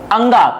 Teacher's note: अंगा कंठव्य भी होता है और अनुनासिक भी होता है